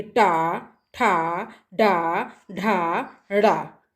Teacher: मूर्धन्य में आते हैं टा, ठा, डा, ढा, ड़ा। हैं, मतलब जिसमें जबान जो है वो ऊपर की ओर मुड़ जाए उसे मूर्धन्य कहते हैं। तो टा कहो, टा कह कर के देखे तभी समझ में आता है कि टा, ठा, डा, ढा, ड़ा।